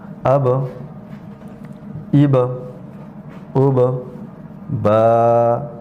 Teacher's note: با ہونٹوں کے اندرونی حصے سے ادا ہوتا ہے، یعنی ہونٹوں کے تری والے حصے کے ملنے سے حرف با ادا ہوتا ہے